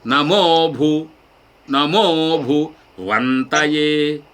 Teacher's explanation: ఏకశృత అయిపోయింది అక్కడ నమో భు నమో భు వంతయే అని అయింది. కాబట్టి భూ ఉదాత్తం లాగా అనిపిస్తుంది కానీ ఉదాత్తము కాదు భూ ఏకశృతి త ఉదాత్తం